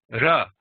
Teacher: this is with the tongue in the front of the mouth it's not a ra ra it's it's toward the front like